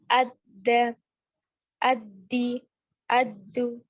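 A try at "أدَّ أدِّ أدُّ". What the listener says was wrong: Ayuh, barakallahu fiik.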